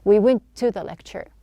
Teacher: instead of pronouncing two T's, we just have one.